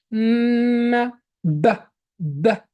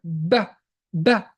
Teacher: Ba is basically the same as meem, but there is an explosion of the air will push it all of a sudden.